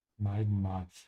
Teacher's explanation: the H just makes the A a bit longer